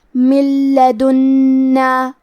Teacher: تو ہم یہ نون ساکن کو لام میں ملا کے بغیر غنہ سے لیکن تشدید کے ساتھ یہ حکم کو ادا کریں گے۔ من لدنا، کلمت لدنا میں حرف نون کے تشدید کو ظاہر کریں گے اور اسے 2 حرف کے برابر پڑھیں گے۔ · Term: حروف الادغام بغیر غنہ